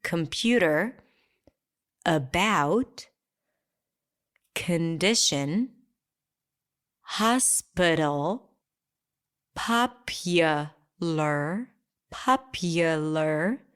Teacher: exist because it's in the spelling and it's pronounced with such a neutral sound that your brain just doesn't detect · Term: schwas